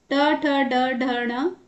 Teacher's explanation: ट वर्ग में जीभ मुड़कर ऊपर टकराती है तो उसी को मूर्धा कहते हैं।